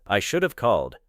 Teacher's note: in I should have called, have is part of a grammatical structure and may become ev.